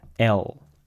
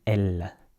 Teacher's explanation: And so you say L, and if you want to make it extra French, you can change the pronunciation of the L, because Americans, English speakers in general, Americans in particular, tend to say the L in the back of the mouth. L, and your tongue sort of goes backward like this.